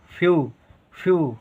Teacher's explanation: फ का उच्चारण कम देर के लिए आधा फ